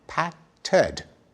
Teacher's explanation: when we say patted, we stick in a vowel, patted, showing that the same suffix, ed, can be readjusted in its pronunciation according to the rules of English phonology.